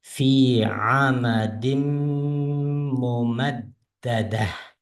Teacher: Mimni ixfa ma'al g'unna, ya'ni g'unna o'qiymiz.